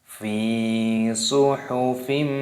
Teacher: idgham artinya memasukkan, karena di sini ada tanda tasdid, dan bi gunnah itu disertai berdengung. Maksudnya di sini ketika memasukkannya disertai berdengung. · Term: idgham bi gunnah